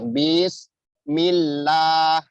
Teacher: Jadi bis Bis mengalir, bismillah. Ini lah pelafalan nama Allah ya, harfun jalalah itu dipanjangkan 2 harokat.